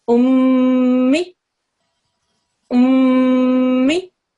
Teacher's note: there's a small nasal sound that you'll make, and that nasal sound will last 2 seconds or longer. 2 seconds is quite a good timing for it. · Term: ghunna